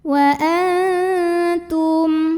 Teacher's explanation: Untuk ikhfa aqrab ini ya, dengungnya sedikit aja karena huruf ta ini makhrajnya masih dekat dengan huruf nun.